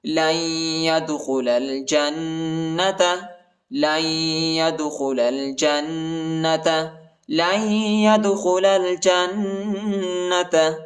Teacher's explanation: کو یا کے ساتھ ملائیں گے اور نون نہیں پڑھا جاتا، نون کے اوپر جزم آیا ہے اور ادھر جو ہے ہم غنہ کریں گے · دال کو جھٹکا دیں گے یعنی قلقلہ کریں گے · جیم کو نون کے ساتھ ملائیں گے اور غنہ کریں گے